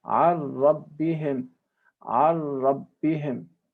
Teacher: This type of idgham is called complete idgham, complete merging, because the nun has totally disappeared, or the nun sakin has completely disappeared.